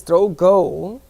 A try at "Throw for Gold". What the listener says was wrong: Throw for gold. Gold. Gold. Not go. Gold. Gold. Throw for gold.